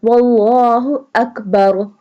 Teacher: یہاں پہ بھی اللہ موٹا ہوگا کیونکہ اس سے پہلے واو ہے اور واو کے اوپر زبر ہے۔